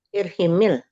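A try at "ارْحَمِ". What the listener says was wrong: Jangan irhimil. Mulanya kan irham. ya alif lam mati. Jadi irham.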